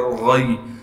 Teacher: غین کو موٹا کر کے پڑھیں گے اور غین کو آگے یا ساکن سے ملا دیں گے، غین یا زبر غی۔